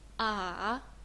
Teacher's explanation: we have a turning point down voice and up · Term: third Tong